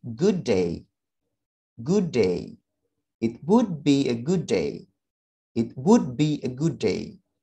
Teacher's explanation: Jadi kan ada dua suara d, maka kita cukup hilangkan salah satunya. We drop one sounds of d, bisa suara yang d yang di sini maupun yang di sini, akan tapi bacanya sedikit lebih panjang. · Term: same or similar sound